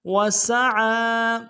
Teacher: فیہا اسمہ وسعى، واو کو نون سے ادا کریں گے، سین کی سیٹی باریک ہوگی، عین کے اوپر کھڑا زبر ہے، ایک دال میں کھینچیں گے، عین کو موٹا ادا کریں گے